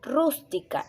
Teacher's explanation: la sílaba rus viene a ser la sílaba tónica